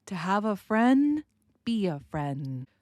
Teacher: I am not going really to pronounce that D sound. It's just going to change the way the N is pronounced.